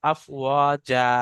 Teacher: চিহ্ন আয়াত থাকার কারণে এক জবরকে বাদ দিয়ে একালিপ পরিমাণ টান হচ্ছে